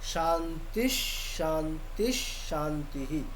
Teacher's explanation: আচ্ছা শান্তি এখানে বলার ক্ষেত্রে দেখুন, যেহেতু প্রথম মানে প্রত্যেকটিতে বিসর্গ আছে, তাহলে শান্তিশ, যেহেতু বিসর্গের পরে তালব্য স আছে, তাই জন্য বিসর্গটা তালব্য স হিসাবে উচ্চারণ করব